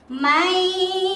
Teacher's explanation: Sebabnya nun sukun bertemu dengan ya. Jadi memasukkan bunyi nun sukun ke dalam huruf ya dan disertai mendengung selama 1,5 alif atau 3 harokat.